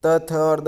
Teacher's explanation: त थ और द इन तीनों का उच्चारण है जो दंत से होता है। जब हम इनका उच्चारण करते हैं तो हमारी जीवा है जो दांतों से टकराती है। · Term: दंत्य